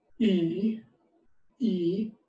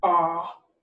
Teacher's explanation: if you say e e your mouth is relatively closed your jaw whereas if you say ah look you can see right inside my mouth